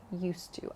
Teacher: There's just one sound there, used to. So think of it as dropping the D